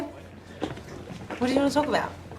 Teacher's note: what you notice with her vowels if you're an Australian English speaker is that they just overshoot a bit